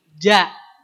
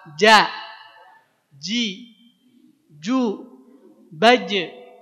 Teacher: Kalau jim atau ja keluarnya di tengah lidah. Tengah lidah kita ditempelkan ke langit-langit.